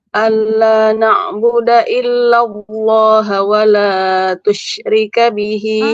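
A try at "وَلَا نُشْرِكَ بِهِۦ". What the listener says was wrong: Titik satu di atas huruf ta apa huruf nun? Wala nusyrika bihi, bukan tusyrika.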